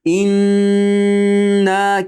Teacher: G'unna mana shu hayshumdan chiqadi. Inna keyin 2 harakat miqdor cho'zamiz.